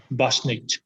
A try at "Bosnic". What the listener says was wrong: There's a t in the end, Bosnic.